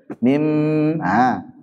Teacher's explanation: Akhirnya mim, paling ringan tuh. Mim sama dengan nun dari segi gunnahnya, dari hidung. Kemudian sama dengan ba dari segi asy-syafatainnya, dua bibir nempelnya.